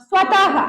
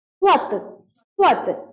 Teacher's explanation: विसर्ग का प्रयोग किस तरह होना चाहिए? घोष ध्वनि ह की तरह।